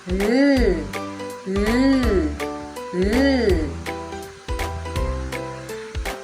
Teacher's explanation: Ang hangin ay lumalabas sa mga gilid ng dila sapagkat ang dulong dila ay nakadikit sa puno ng gilag. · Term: pagilid